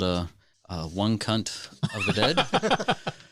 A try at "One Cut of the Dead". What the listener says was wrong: That was, you added an extra letter. One cut of the dead. We don't, y'all don't say that.